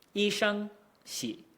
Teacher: you can just kind of croak at the bottom of your register. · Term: third tones